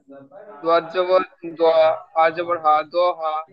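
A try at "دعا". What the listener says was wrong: ওটা হা না আইন?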